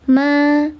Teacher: Alif sebelumnya harakatnya fathah, dibaca panjang 2 harakat. Nama hukumnya mad tabi'i zahir karena alifnya nampak.